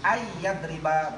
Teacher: Idgham ma'al gunnah. Masuk serta dengung.